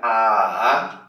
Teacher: A terceira entonação, ela sobe e desce.